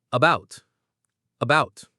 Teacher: The stress in the word about is on the second part, about. Right. Bout is the strong part.